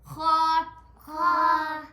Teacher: حلق کے اوپر والے حصے سے خا ادا ہوتا ہے